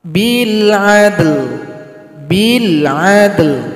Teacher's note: Cara berhentinya sukunkan huruf lam, berikan bunyi vokal.